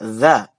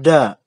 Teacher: za diucapkan dengan dari ujung lidah dengan ujung gigi yang atas. Ya, za. Jangan sama dengan da.